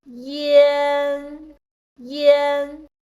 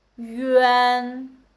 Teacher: all of them are nasal sound. You can feel there is air come out from your nose.